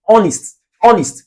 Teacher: This H is silent.